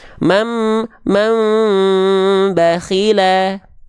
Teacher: samarkan, dengungkan, membalik bunyi an ke bunyi am. Membalik bunyi nun sukun ke bunyi mim sukun. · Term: iqlab